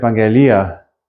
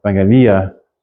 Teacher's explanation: The accent on that last iota.